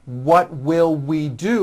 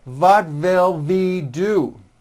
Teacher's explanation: It's never a V sound, where you are like biting down on your lower lip. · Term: W sound